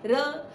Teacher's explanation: र शब्द लुंठित है। र शब्द क्यों लुंठित है? क्योंकि जो हमारी जीभ है वो मुड़ जाती है।